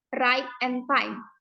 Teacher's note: this Begins with an Open vowel sound and Moves towards a closer sound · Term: closing diphthongs